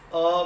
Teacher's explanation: તમે અ બોલો તો નાદ જે છે આમ છૂટો એકદમ મુક્તપણે બહાર આવ્યો છે, સ્વતંત્ર રીતે બહાર આવ્યો છે